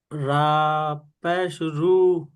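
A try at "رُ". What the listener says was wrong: রা নয়, র, র, নূরু, নূরু। নু বলে এক আলিফ পরিমাণ টান হবে, কিন্তু রু টান হবে না।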